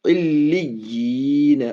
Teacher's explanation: لام میں تشدید ہے، تشدید کو دو بار بولتے ہیں بس